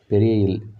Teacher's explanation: இது மேல்வாயை நாக்கின் ஓரங்கள் தடித்து தடவுவதால் பிறக்கின்றது.